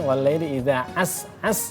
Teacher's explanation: itu sinnya tipis semuanya ya, pakai sin bukan shin ya